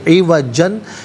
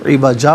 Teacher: عوجن یہاں وقف کریں گے تو عوجا پڑھیں گے۔